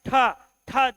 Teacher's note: मात्रा ज्यादा होगी ट ट में कम होगी ट के बाद ठ ठ जैसे बोलोगे पूरे मुख से वायु भरी हुई नजर आएगी